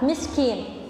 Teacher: kayak jadi qaf. Harusnya dia kaf, miskin.